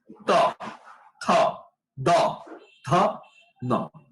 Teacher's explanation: এই ধ্বনিগুলো উচ্চারণের সময় দেখো জিহ্বা কোথায় স্পর্শ করে? দাঁতে স্পর্শ করছে। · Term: দন্তধ্বনিগুলো